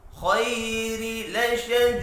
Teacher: रॉ को जेर की वजह से बारीक पढ़ेंगे। लशदी या मद्दा है, एक अलिफ के बराबर खींच कर पढ़ना है।